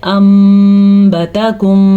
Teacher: ہونٹ بھی بند کرنے اور غننے کی کیفیت پیدا کرنی ہے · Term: اقلاب